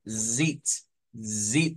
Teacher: en el ipa la z es la s vibrante O sea no es lo mismo decir Sit que zit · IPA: /zit/